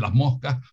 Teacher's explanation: la tendencia del español de Canarias es a que se aspire esa S final